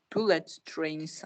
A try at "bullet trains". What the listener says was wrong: Bullet trains. I know it's hard because you need to say to here, and you also need to say to here, right? So bullet t and also t train. Bullet trains. Trains. Because you have S, so you need also to say z here.